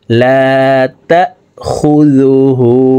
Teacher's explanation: খ পেশ খু, জাল পেশ জু, হা উল্টা পেশ হু। হার উপরে উল্টা পেশ আছে, তাই ঠোঁট গোল করে এই হাকে 1 আলিফ টেনে পড়ব